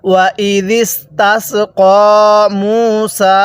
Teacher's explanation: পেশের পরে ওয়াও সাকিন এক আলিফ টানতে হবে। আর যেই হরফের উপর এরকম খাড়া চিহ্ন দেখব ওই হরফটি আমরা এক আলিফ টেনে পড়ব।